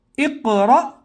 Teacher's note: حمزہ ساکینہ کے پڑھنے میں جھٹکا ہوتا ہے